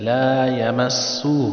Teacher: سین کو سٹی کی طرح بجائے ، لا یمسہ، ہو پہ چھوٹا مد ہے، اس کو 2